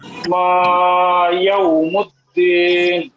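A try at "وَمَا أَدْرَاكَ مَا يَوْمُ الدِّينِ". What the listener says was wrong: দিনে আরেকটু টান দিলে ভালো হবে, যেটা আমাদের ইয়া ভাই বলছিলেন, কামাল ভাই। দিনে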